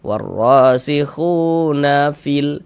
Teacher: Sehingga khu dibaca panjang, madu tabi'i panjangnya 2 harokat.